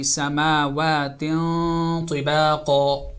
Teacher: When you make when you do ikhfa and you are going from tanween to ta, so make sure that your sound, your voice is getting heavier, because the next letter coming is ta, which is heavy. So ikhfa, the noon sound, the nasal sound would be slightly heavy.